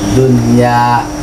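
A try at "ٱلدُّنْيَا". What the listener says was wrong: masih ada samar-samar dikit. Dunia, dunia, ha, nggak boleh pakai ha.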